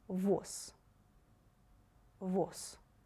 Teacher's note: In the last word you read Z like voiceless S.